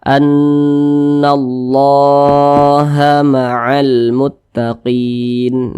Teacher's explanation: cara membaca huruf lamnya itu diizharkan jadi dibaca jelas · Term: izhar qamariah